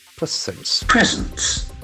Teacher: this is a very interesting noun where the accent falls the first syllable